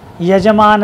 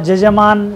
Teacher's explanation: यकार को जैसे जकार उच्चारण है, तो जैसे यजमान है वहाँ जजमान शब्द का प्रयोग है।